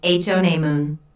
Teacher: there are three syllables in honeymoon with the stress on the first syllable